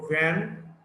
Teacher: the v, the voiced labiodental fricative.